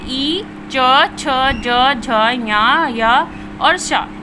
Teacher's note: इचू शना यानी ई और चा वर्ग के सभी वर्ण शा और ना तालु से उच्चारित होते हैं